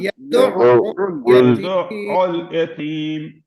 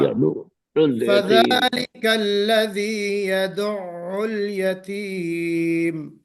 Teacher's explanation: یہاں پہ عین کو 2 بار پڑھنا ہے. عین پر شدہ ہے. عین پر شدہ ہے.